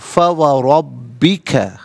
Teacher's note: فا و ربک، ملا کر پڑھیں گے فا و ربک، را پر زبر ہے، را کو پر کر کے پڑھیں گے، با مشدد ہے، با کو جماؤ کے ساتھ پڑھا جائے گا